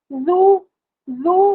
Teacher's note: زال سختی سے نہیں، نرمی سے، سیٹی کی آواز نہیں، سختی کی آواز نہیں، بزر ساؤنڈ نہیں